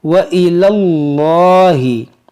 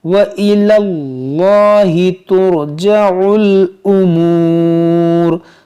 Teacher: یہ اسم جلالت سے پہلے زبر ہے، اس کو موٹا کریں گے. وَإِلَى اللَّهِ اور لام کو کھینچیں گے.